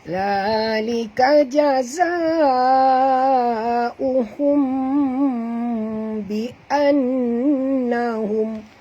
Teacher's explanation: Mim mati bertemu ba ya. Jadi kita kena dengung dekat sini tuan-puan, ikhfa syafawi ya.